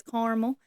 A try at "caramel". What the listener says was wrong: That A is very much there.